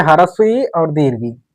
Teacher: इसका जो उच्चारण स्थान है वो हमारा है तालु। ये मुख के तालु भाग से बोले जाते हैं और इनका जो नाम है वो तालव्य है।